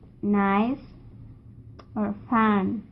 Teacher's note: the place of articulation is alveolar. So it is voiced. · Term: nasal